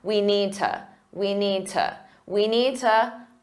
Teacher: To is commonly reduced to just a ta.